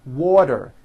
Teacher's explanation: if it falls in the middle of vowels then the t is pronounced as a d and the whole word is voiced this is very easy and